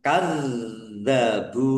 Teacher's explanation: ada tasdidnya ditahan dan ditekan biar tampak dobelnya